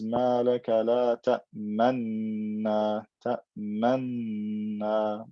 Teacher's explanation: So there's two noons, but all of the qurra agree to merge them together. They both have haraka, dhamma, fatha, right? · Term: idgham kabir